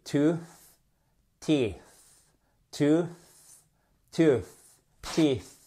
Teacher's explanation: Vous passez la langue entre les dents du haut et les dents du bas sans les toucher. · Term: soft TH